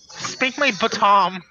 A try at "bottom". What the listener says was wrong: Baton? You're putting the emphasis on the wrong part of the word.